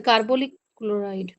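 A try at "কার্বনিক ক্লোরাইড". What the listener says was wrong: কার্বনিক, নিক কিন্তু, নিক, হ্যাঁ, লিক না। হ্যাঁ, দন্ত নাসিক।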